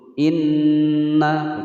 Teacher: cara membacanya adalah ditekan dulu, ditekan kemudian ditahan selama 2 ketukan. Jadi jangan buru-buru.